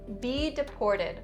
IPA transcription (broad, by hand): bi-dɪ-ˈpɔːr-tɪd